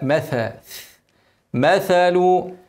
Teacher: مثل الثاء ما تنساش اوعى تقولها سين